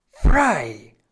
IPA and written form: fʁaɪ̯ (frei)